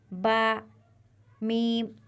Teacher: ऊपर वाला होठ जब नीचे वाले होठ में मिलेगा तो बा और मीम अदा होंगे